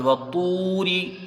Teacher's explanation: واو مدہ سے پہلے حروف مستعلیہ تو ہے، را کے نیچے زیر ہے، اس کو جلدی پڑھا جائے گا، را کو باریک پڑھیں گے